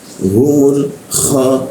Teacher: di atas jakun ada suara seperti hurufnya k bergetar ya bagian dalamnya bergetar